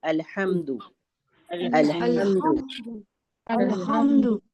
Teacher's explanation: جب ہم ال کہیں گے تو ال کہہ کے فوراً رکیں گے اور حمد ح کو میم سے ملا دیں گے